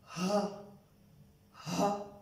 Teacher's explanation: The rounded or two-eyed ha is pronounced from halqe aqsa which is the lower portion of our throat and it is towards our chest. Ha, ha. This is golite or circular or two-eyed ha.